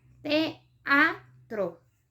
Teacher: teatro, que tiene igual dos vocales fuertes, E y A, y se separan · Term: hiato